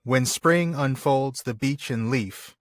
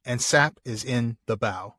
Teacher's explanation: >> And these are actually arranged into almost half lines where you've got basically four of those feet. So, four unstressed stress repetitions with usually a quick break and then three more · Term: natural pause